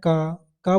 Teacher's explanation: अल्प प्राण का मतलब होता है इनको जब बोलते समय हमारी हवा कम निकलती मुख से जैसे मैं क क बोलते तो आराम से बोल दिया मैंने